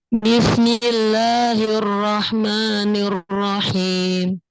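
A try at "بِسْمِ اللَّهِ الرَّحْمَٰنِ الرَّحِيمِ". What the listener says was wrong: Masih ada di sana belum pas, lidahnya masih kena ke gigi yang di depan itu, gigi seri yang di depan itu masih kena ke situ.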